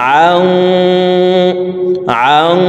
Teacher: নুন সাকিনের পরে ইকফার হরফ সদ আসছে, এই কারণে এই নুন সাকিনকে নাকের ভিতরে লুকাইয়া গুন্নার সহিত পড়ব। তো দেখুন গুন্নাটি এইভাবে করব আং আং صاد জবর স লাম